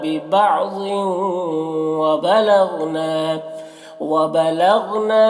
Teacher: ببعض ضاد کو پر پڑھیں گے اور یہاں پر تنوین کے بعد واو حروف یومن میں سے تو تنوین کو واو سے ملا کر غنہ کے ساتھ پڑھیں گے، اس کو ادغام ناقص کہتے ہیں۔ وبلغنا غین کو پر پڑھیں گے، یہ حروف مستعلیہ میں سے ہے۔